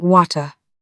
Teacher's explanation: MLE speakers might keep the T, but give the schwah a bit more energy, so it sounds almost like water.